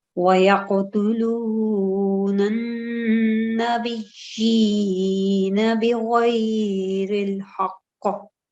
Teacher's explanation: Whenever it's noon mushaddad, we have to make a ghunna sound for 2 seconds.